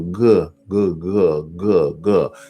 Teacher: that's the back of your tongue against the throat